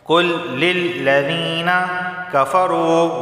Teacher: واو سے پہلے پیش ہے، اسے 1 الف کے برابر کھینچ کر پڑھا جائے گا